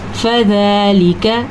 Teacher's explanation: اب زال کھڑی زبر زا لمبا کرنا ہے. لام زیر لی لمبا نہیں کرنا. کاف زبر کا لمبا نہیں کرنا.